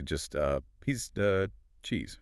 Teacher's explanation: just dropping the V entirely